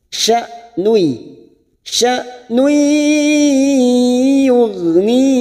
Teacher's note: hamzah sukun sifatnya siddah. Jangan sampai mengalir.